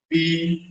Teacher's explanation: दोनों होंठ टकरा गए